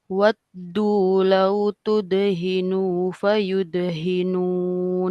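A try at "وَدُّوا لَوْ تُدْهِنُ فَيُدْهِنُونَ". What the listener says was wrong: Nah, nunya jangan dipanjangin. Tudhinu fayud. Panjang dia tuh. Tudhinu fayudhinun.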